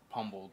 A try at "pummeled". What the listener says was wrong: It's pummeled. There's no B in it.